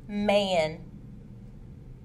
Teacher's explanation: Mm is made using the lips and nasal passage. It is a nasal sound and is voiced. The vocal cords vibrate.